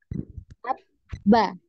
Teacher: Nah, di sini bisa kita rasakan ya ketika kita mengucapkan ba, nah, ada pertemuan ya di antara kedua bibir ya, ada pertemuan di antara kedua bibir